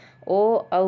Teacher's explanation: ओ औ का कंठोष्ठ हो जाता है।